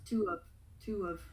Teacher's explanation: with the two, your lips are going to be round. Ooh. So what we're going to do there is join it with the little w sound.